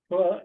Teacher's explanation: the sound of pa is pa, that is bilabial. It's produced with the help of our two lips in Marathi.